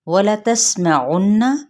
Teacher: وَلَتَسْمَعُنَّ، ان حرکات کو لمبا نہیں کریں گے، سین پہ سیٹی کو واضح کریں گے، آئین کی پیش کو نون کے ساتھ ملائیں گے اور نون پہ پراپر غنہ کریں گے۔ غنہ کا مطلب ہے ناک میں تھوڑی دیر آواز کو ٹھہرانا۔